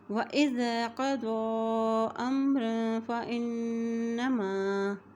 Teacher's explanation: ضو کے اوپر کھڑی زبر بھی ہے اور مد بھی ہے، اس لیے اس کو لمبا ادا کریں گے۔ وَإِذَا قَضَىٰ أَمْرًا فَإِنَّمَا، الف کی زبر کو میم کے ساتھ ملائیں گے، میم کے اوپر جزم ہے، را دو زبر الف رن، امرن فإنما۔